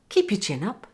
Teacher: And notice how the intonation rises on the word up.